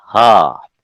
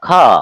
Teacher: अ और कवर्ग और ह ये तीनों क्या कहलाएंगे, सवर्णी, क्योंकि एक ही जगह से निकल रहे हैं, कहां से, कंठ से